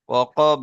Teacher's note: ওয়াকব পড়বেন, ঠিক আছে, লাস্টে বাটা একটু কলকলা করবেন